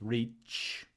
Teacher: That's a T long S, ch, affricate.